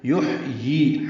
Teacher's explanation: ہا ساکن پہ ہمس ہے، وسط حلق سے ادا ہوگا۔ یا کے نیچے کھڑی زیر ہے، 2 حرکات لمبا کریں گے۔